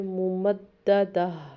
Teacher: جو گول تا ہوتی ہے یہ وقف پہ گول ہا میں بدل جاتی ہے